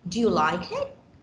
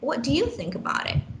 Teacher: hear a rising tone at the end we know it is supposed to be yes or no